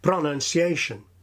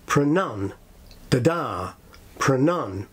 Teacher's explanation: Many non-natives begin this word far too strongly, saying something like pronunciation. But in native speech, the word begins very weakly, as many English words and phrases begin